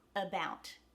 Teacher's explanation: the ow is the emphasized or the stressed syllable in the word about